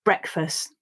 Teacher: breakfast this one is practicing the e uh and s sounds you'll see that i don't pronounce that final t but if you do then it also practices the t sound